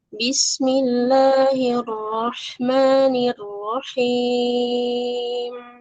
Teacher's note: Jangan ner, nirrahim, kasrohnya sempurna.